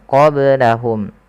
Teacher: qablahum ada ba sukun maka dibaca dengan qalqalah